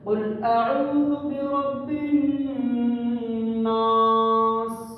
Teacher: الف مدہ میں زبر والے حرف کو ایک الف کے برابر کھینچا جاتا ہے، یعنی 2 سیکنڈ کے برابر، 2 حرکت کے برابر